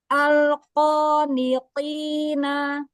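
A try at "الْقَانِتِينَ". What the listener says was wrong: Alqo. Tahan lagi lam sukun sedikit.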